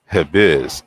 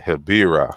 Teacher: when Hibiz is not followed by a trailing vowel, the Z remains. But as soon as a vowel is behind the Z, it turns into R, which then turns into L. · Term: rhoticism